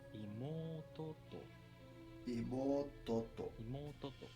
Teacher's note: In this pattern, the accent is on the last molar. So when a particle is attached, the pitch goes down before the particle. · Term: tail high pattern